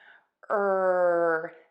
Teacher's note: tip of the tongue is either pointed down or flipped back back of the tongue is high up